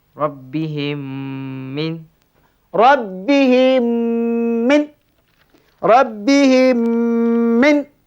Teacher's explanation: macam mana cara bacaannya cara bacaannya dimasukkan diidam dimasukkan di dalam diidamkan mim pertama ke dalam mim yang kedua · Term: idgham mutamasilain